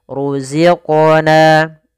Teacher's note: ada mad tabi'i kasrah bertemu dengan ya sukun. Panjangnya dua harokat.